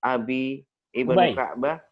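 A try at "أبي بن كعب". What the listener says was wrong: min hadisi Ubay. Namanya bukan Abi, Ubay bin Ka'ab.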